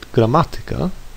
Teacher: I stress the syllable ma, which is third from last, and not the second from last. This word is an exception to the rule, like others that end in ika and derive from Greek.